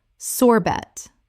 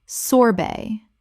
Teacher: The T at the end is silent in both British and American English.